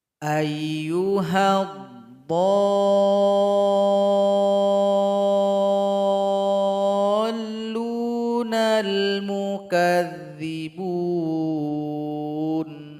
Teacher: dhad dipanjangkan 6 ketukan baru tasydid.